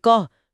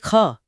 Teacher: कम वायु निकले तो अल्पप्राण अधिक वायु निकले तो महाप्राण। · हां जहां भी अंग्रेजी स्पेलिंग में एच जुड़ता है वे ध्वनियां अक्सर महाप्राण होती हैं। जैसे के से क जो अल्पप्राण है लेकिन के एच से ख जो महाप्राण है।